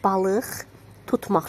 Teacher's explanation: Samit gələndə x kimi tələffüz olunur.